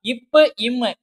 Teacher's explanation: நம்மளோட மேல் உதடும் கீழ் உதடும் பொருந்துற மாதிரி இருக்கும் சரியா இப்பு ம் இந்த ரெண்டு எழுத்துக்களும் மேல் இதலும் கீழ் இதலும் பொருந்துவதால் பிறக்கின்றன